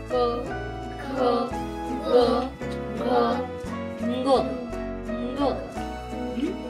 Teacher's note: व्यंजनामध्ये या अनुनासिकाचा उच्चार जीभ कंठाला लावून होते। कसं? जसे क चा उच्चार होतो क ख ग घ ङ ङ असा।